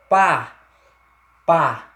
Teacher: que é que eu tenho uma vogal orava quando o ar a emissão de ar sai apenas pela boca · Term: vogais orais